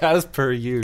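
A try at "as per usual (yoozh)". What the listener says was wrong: Is that Donald Trump saying huge? What is happening with as per huge? No, you got to get the shh in there.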